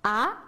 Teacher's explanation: ikkinchi ton bu a yuqori qarab mangdi